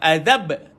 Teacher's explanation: Kalau ba baca macam mana? Azab. Tu qalqalah pada ba.